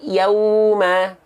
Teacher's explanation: ketika melafalkan waw sukun di sini bunyinya harus membentuk bunyi u. Yauma, jangan sampai dibaca ya yauma.